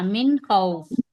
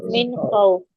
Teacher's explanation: ہاں اظہار کا نہیں، حرف حلقی کا خو آیا ہے. ہاں یہ حرف حلقی کا خا آئے گا تو یہاں پہ نون کو ظاہر کریں گے